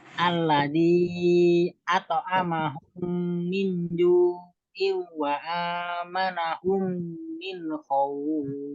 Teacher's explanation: At'amahum, mim ketemu mim. Itu idgham mimi harus dengung.